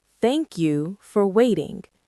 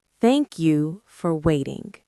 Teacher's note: The stress is on thank and wait.